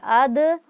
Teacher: دال کی ادائیگی کرتے وقت آواز اپنے مخرج سے لگتی ہے اور ٹکرا کر واپس لوٹ رہی ہے، یعنی آپ جیسے ایک گیند کو دیوار پر مارتے ہیں تو وہ لگ کے واپس آتا ہے، اس طرح سے آپ اس کو محسوس کریں گے تو آپ زیادہ بہتر انداز میں اس کی ادائیگی کرنے پر قادر ہو سکیں گے انشاءاللہ۔